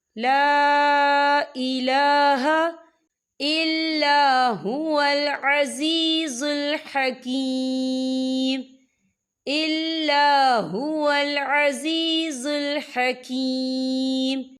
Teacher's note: اور اس میں چھوٹی سی مد بھی ہے، تو ہم اسے 4 حرکت کے برابر کھینچ کے پڑھیں گے